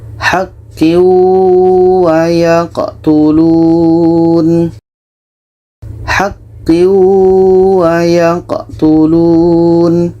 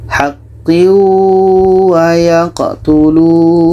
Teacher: Tanwin kita masukkan ke waw dan diiringi dengan dengung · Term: idgham bi gunnah